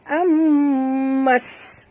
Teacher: Mim bertasydid, wajib dengung ya. Di sini wajib al-gunah.